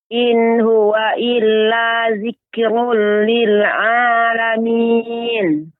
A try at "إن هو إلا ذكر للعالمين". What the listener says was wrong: kafnya lebih ditampakkan lagi Ibu ketika dia sukun zikrul in huwa illa zikrul lil alamin.